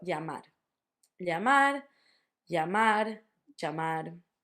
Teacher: the easiest way for English speakers is normally to say it as a y